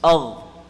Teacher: So ma aghna, the ghain is full mouth.